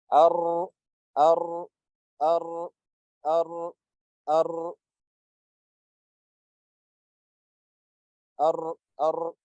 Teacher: With the ra, it's almost closed, but you leave a small gap at the tip of the tongue and the sound comes out through that gap.